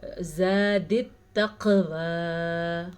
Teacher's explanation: قاف پہ کلکلا ہو رہا ہے کیونکہ قاف پہ جزم ہے، زا پہ رکنا جائز نہیں ہے تو ہم یہاں پہ نہیں رکیں گے.